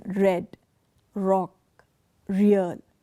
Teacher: Under the post-alveolar place of articulation, the tongue is placed behind the alveolar ridge in the sound of the letter R